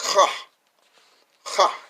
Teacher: It got like a rasping H sound. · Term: chet